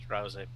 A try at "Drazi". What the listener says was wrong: drowsy, but with a little more air.